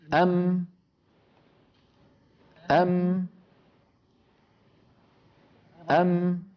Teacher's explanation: مكتوب عليها مثلا الميم الساكنة تخرج بتصادم الشفتين. أم أم أم، فبتصادم الشفتين بعضهما ببعض تخرج الميم الساكنة